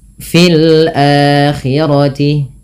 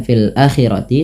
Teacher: dua harakat Fil akirti ini tidak dibaca dengan fil Akti tapi dipanjangkan dengan a-nya dengan a yang dipanjangkan karena ini terjadinya mad badal tatkala adanya Hamzah bertemu dengan huruf mad berupa Alif yang di